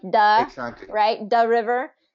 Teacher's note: the th usually becomes a D sound